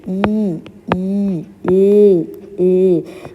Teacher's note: ఏంటి నాలుక యొక్క కొన భాగం చివర చివర ఉండేటటువంటి భాగాన్ని జివ్హాగ్రము అంటారు. జివ్హాగ్రము మాత్రమే తాలువు వైపు గాని లేదా దంతాల వైపు గాని పైకి లేవడం వల్ల పుట్టే ధ్వనులు ఇవి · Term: అగ్రాచులు